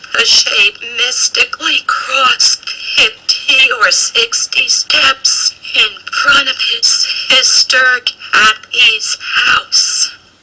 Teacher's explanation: My vocal cords stay open rather than open and shut, and I sound breathy quite frequently.